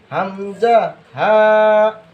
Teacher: এক নাম্বার মাখরাজ হলকের শুরু হইতে